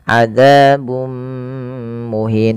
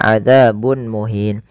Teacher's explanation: cara membacanya memasukkan tanwinnya kepada mim dan ditahan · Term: Idgham bighhunnah